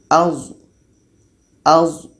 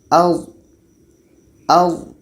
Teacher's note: D ini letaknya pada ujung lidah menempel dengan ujung gigi seri atas. Ujung lidah menempel dengan ujung gigi seri atas.